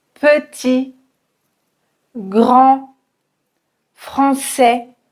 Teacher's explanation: Vous remarquez que je ne prononce ni le T, ni le D, ni le S.